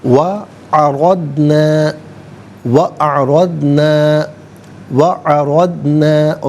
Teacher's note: را پر زبر ہے، را کو پر کر کے پڑھا جائے گا